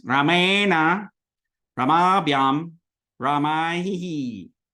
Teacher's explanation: really get that na, so you know it's retroflex